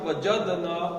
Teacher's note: دال ساکن ہے تو کلکلہ ہوگا اس پہ